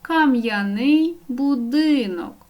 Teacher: виділене слово каменю змінюємо його кам'яний будинок кам'яний вживаємо з апострофом м твердий приголосний я позначає два звуки